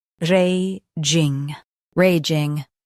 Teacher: Emphasize ray and keep ging smooth.